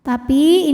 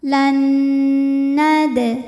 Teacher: nun pertama dileburkan ke nun kedua disertai bunyi dengung n. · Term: idgham bil gunnah